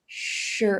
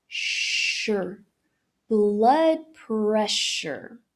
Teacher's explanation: A transição é direta do SH pro R.